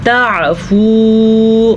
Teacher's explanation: تعفو عین کو واضح کر کے پڑھنا ہے، مد کا آپ نے اچھا خاصا خیال رکھنا ہے، 2.5 سیکنڈ تک لمبا کرنا ہے